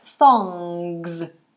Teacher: it's a NG so the tongue goes up to the back